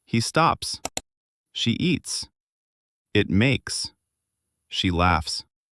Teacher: Your throat doesn't vibrate for that S sound. It's just air.